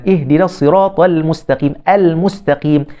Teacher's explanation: lam yang sukun tu bertemu dengan mim. Jadi kita kena baca secara izhar.